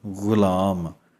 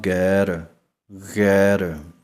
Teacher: ਹੈ ਕਿ ਇਥੇ ਕੰਬਣ ਪੈਦਾ ਹੋਵੇਗੀ ਕਿ ਕੰਭੇਗੀ ਥੋੜੀ ਆਵਾਜ ਗਗਾ ਜਿਵੇਂ ਪਾਣੀ ਦਾ ਕੋਈ ਗਾਰਾ ਕਰੇ ਮੂੰਹ ਦੇ ਵਿੱਚ ਪਾ ਕੇ ਗੜ ਗੜ ਦੀ ਆਵਾਜ਼ ਆਉਂਦੀ ਹੈ ਇਸੇ ਤਰ੍ਹਾਂ ਆਵਾਜ਼ ਨਿਕਲੇਗੀ ਗਗਾ ਓਲਾ ਜਿਹਾ ਉਚਾਰਨ ਹੈ ਪੂਰਾ ਗਗਾ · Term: ਗਗੇ ਪੈਰ ਬਿੰਦੀ